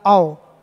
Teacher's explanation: पहले मुंह खुला था और बाद में आधे पर लाकर मैंने छोड़ दिया